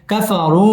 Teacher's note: কাফারু মধ্যে তাবাই এক আলিফ টেনে পড়তে হবে